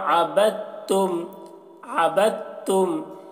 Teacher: यहाँ पर दाल को नहीं पढ़ रहे हैं क्योंकि दाल के ऊपर जज़्म है, जज़्म के बाद तशदीद वाला हर्फ आ रहा है, तो जज़्म वाले हर्फ को नहीं पढ़ते हैं।